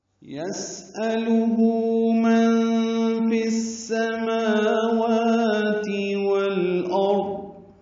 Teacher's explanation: یسألہ الٹا پیش ہے، یہ 2 حرکات لمبا کریں گے. من میں نون ساکن کے بعد فا آنے کی وجہ سے اخفا ہے، نون کی آواز چھپائیں گے. پھر سماوات میں فا کو سین سے ملا دیں گے، ادغام شمسی ہے، سین صفیر کی آواز سے ادا ہوگا.